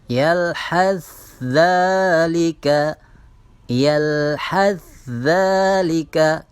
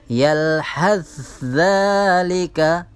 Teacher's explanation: seolah-olah di kalimat za itu ada tasydidnya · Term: idgham mutaqaribain